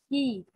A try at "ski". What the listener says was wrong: Ski. Not ski. Ski. Ski. Đọc rõ âm s ở đầu ra. Ski.